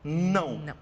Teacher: você vai perceber que o seu nariz assopra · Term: nasalização